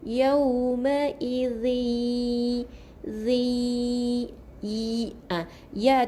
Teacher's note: kena masukkan bunyi nun ke dalam bunyi ya. Jadi kita masukkan dengan dengung 2 harakat. Jadi yauma idzi ya tu kena tekan 2 harakat, baru tahan, baru masuk yas. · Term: idgham bi gunnah